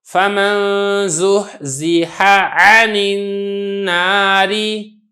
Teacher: ہا اور عین جمع ہو گئے تو یہاں پہ ہا واضح ہو، عین الگ ہو۔